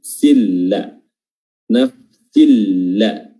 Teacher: tidak ada gunnah sama sekali, ya, tidak ada gunnah dan juga tidak ditahan durasinya, langsung seakan-akan dia langsung tasjid huruf lam. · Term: idgham bila gunnah